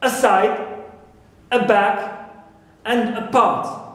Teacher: the stress is not on a, but on the original syllables